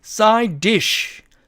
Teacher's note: 그런데 보니까 드가 또 이렇게 두 개가 합쳐지게 됩니다. 그래서 이 경우에는 앞에 있는 D를 이렇게 탈락시켜서 side dish 이렇게 읽어야 됩니다.